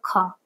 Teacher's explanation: प्राण ज्यादा खींच लिया खा, तो ये महाप्राण है